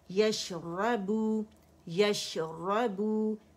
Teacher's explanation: شین کی آواز اس لیے چلے گی ایک کاؤنٹ کے لیے کیونکہ اس میں ہمارے پاس تفشی ہے اور سکون پہ تمام جو صفات ہیں وہ جو لیٹر ہوتا ہے، حرف ہوتا ہے، اس کی واضح ہو جاتی ہیں، ٹھیک ہے؟